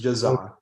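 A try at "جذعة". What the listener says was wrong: Is there a difference when I say Jaza and Jadha? It's like in English, when you have a Z, that's za, and when you have THE, you say the. Just imagine you're saying ja, and then when somebody says in English, for example, they say the house. So you're saying ja, the, a.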